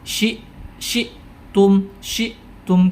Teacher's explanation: ketika ada Hamzah sukun maka seketika itu suaranya berhenti syi syi Tum syium karena dia memiliki sifat syidah yang mana